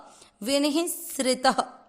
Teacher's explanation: त में अ की मात्रा तो विसर्ग को पढ़ लेंगे ह